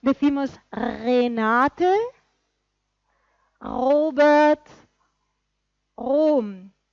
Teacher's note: La R, no es la R de Ramón. Es una R parecida a la francesa, pero algo más gutural.